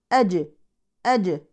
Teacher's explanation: الجيم من حروف القلقله وتوفر الشرط وهو السكون